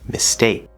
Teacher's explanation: if you listen really closely with mistake it almost sounds like it's a d sound